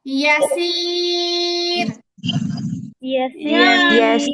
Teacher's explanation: সবগুলোর মধ্যে আমি তিন আলিফ টান দিয়ে পড়ছি